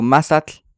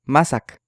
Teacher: el sonido TL no es ni t ni l realmente es una combinación de los dos la parte más difícil es la l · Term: alveolar africada